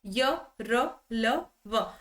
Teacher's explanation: इनका उच्चारण स्वरों और व्यंजनों का मध्यवर्ती होता है। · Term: अंतस्थ व्यंजन